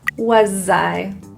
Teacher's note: In the word was, that S is voiced. It sounds like a Z.